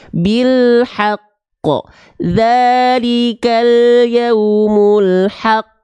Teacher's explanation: ditekan dulu baru lempar pantulannya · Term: Qalqalah Akbar